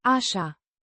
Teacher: With the stress on the first syllable and a distinct She.